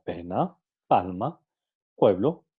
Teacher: los órganos articulatorios que participan en la pronunciación del fonema son el labio superior y el labio inferior en su articulación los labios se cierran completamente impidiendo la salida · en su articulación los labios se cierran completamente impidiendo la salida del aire a través de la cavidad bucal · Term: fonema oclusivo sordo, oclusivo sordo, oclusivo bilabial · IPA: /p/